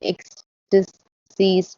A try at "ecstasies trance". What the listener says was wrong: Ecstasy's trance. You didn't say the word trance. You just dropped it by accident.